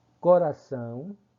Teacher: o A, que é uma vogal, e o O com um som de semivogal.